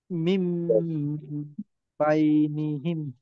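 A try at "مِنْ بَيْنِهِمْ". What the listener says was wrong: জি, মিম বাইনিহিম, গুন্নাতে আরো সময় দিবেন। আর আরেকটা বিষয় কি, আমরা অনেক সময় কি যে যখন বানান করি ওই সময়টায় লক্ষ্য করি, কিন্তু পরবর্তীতে মিলিয়ে পড়ার সময় ওইটাকে আর খেয়াল করা হয় না।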